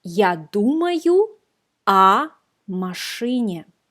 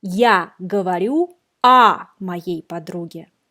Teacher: And pay attention to the pronunciation of the preposition о. We write о, but we pronounce а.